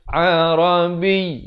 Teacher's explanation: Huruf Ain makhrajnya di pertengahan kerongkong.